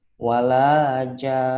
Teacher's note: Karena ini kan bacanya wakof, kita coba wakof. Jadi ditahan 2 harokat nunnya, nun tasydidnya. Walajan, ada dengungnya.